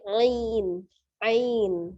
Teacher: karena kita wakafkan nunnya, maka disukunkan nunnya, maka madlin menjadi panjang. Jadi ainnya dibaca panjang.